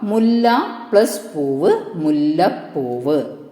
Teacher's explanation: പകാരം ഇരട്ടിച്ചു, പ എന്ന അക്ഷരം ഇരട്ടിച്ചു.